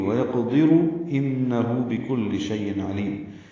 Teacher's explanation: ان میں نون مشدد پہ غنہ ہے، ہو الٹا پیش، 2 حرکات لمبا کریں گے.